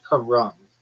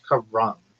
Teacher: Sounds like car ramen. Emphasis on the first syllable.